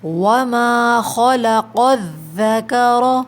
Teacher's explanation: خا بھی heavy letter ہے، موٹا پڑھا جاتا ہے، اور قوف بھی، تو ان دونوں کا ہمیں موٹا پڑھنا ہے۔